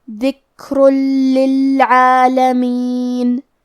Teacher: ہم یہ تنوین کو لام میں ملا کے بغیر غنہ سے لیکن تشدید کے ساتھ یہ حکم کو ادا کریں گے